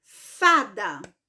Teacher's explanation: a sílaba mais forte ou a sílaba tônica da palavra fada é justamente a penúltima sílaba. Não é a última, que a última é da.